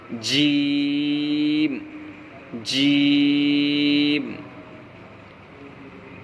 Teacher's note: جیم کا مخرج زبان کا بیچ اور اوپر کا تالو سے جیم ادا ہوتا ہے